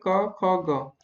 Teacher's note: जिन वर्णों के उच्चारण में जिह्वा के मूल का स्पर्श होता है उन्हें दोस्तों जिह्वा मूली कहते हैं, जैसे क, ख, ग।